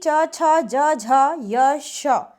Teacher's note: ये आपकी तालू से बोले जाते हैं और इनका नाम दिया गया है तालव्य